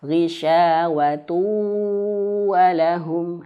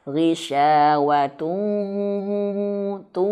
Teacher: Lebih tepatnya adalah dimasukkan ke huruf wau dan disengaukan. Masukkan ke dalam hidung. Gisyawu tu betul-betul masuk sampai ke hidung sini. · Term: idgham bighunah